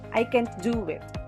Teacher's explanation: The emphasis is on do, meaning it is not possible for me to do it now. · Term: sentence stress